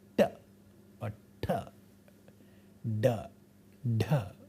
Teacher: the tip of the tongue curls back and flaps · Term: retroflex sounds